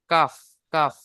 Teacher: আর কাফের মাখরাজ হলো জিভের গোড়া হতে একটু আগে বাড়িয়ে তার বরাবর উপরের তালু।